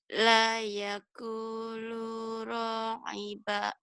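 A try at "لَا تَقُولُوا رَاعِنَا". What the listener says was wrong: Titiknya di mana ya Jadi pencerahannya titik 2 di bawah itu ya. Titik 2 di atas itu tak. Tak ya.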